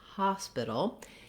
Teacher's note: in the word hospital, the main stress is on the ha syllable, the first syllable. So it would sound like hospital.